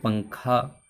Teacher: نون کی آواز کو ناک میں چھپا کر پڑھنا چاہیے، نوک زبان تالو سے ہٹا کر، جیسے اردو میں پنکھا کے نون کو پڑھتے ہیں۔ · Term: اخفا